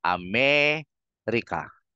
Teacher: Na-emphasize mo na yung me eh.